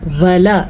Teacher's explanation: واو اور لام کو لمبا نہیں کرنا، کیونکہ واو کے اوپر بھی پڑی زبر ہے اور لام کے اوپر بھی پڑی زبر ہے